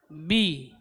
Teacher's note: itbaq atau merapatnya kedua bibir ketika mengucapkan huruf ba itu lebih kuat dari mim